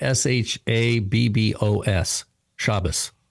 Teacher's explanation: And the accent's on the first syllable, Shabbos.